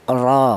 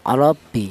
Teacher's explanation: cara menebalkan huruf ro yang dibaca tebal atau dibaca tafhim itu menggunakan lidah bagian belakang diangkat ke atas